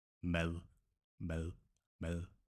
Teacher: if in Danish we have a D following a vowel sound, the D is soft. It sounds like L. · Can imagine it a little bit like the English the, except your tongue, if you say the, it's out there. But the Danish soft D, mad, the tongue is more curled.